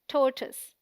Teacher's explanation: TOR is the stressed syllable, rhyming with more. TOISE sounds like tuss, a short U sound.